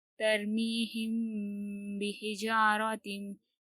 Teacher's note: यहाँ पर हम गुन्ना और इख्फा के साथ पढ़ेंगे क्योंकि मीम के बाद बा आया है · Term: इख्फाए शफवी